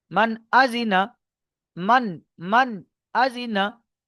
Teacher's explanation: পরিষ্কার জাহির, নুন সাকিনের আওয়াজকে জাহির করা হলো বিনা গুণায়।